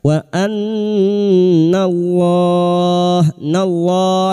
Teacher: lam jalala yang didolif fathah kita baca tafkim sambil kita wakafkan empat harakat kita panjangkan.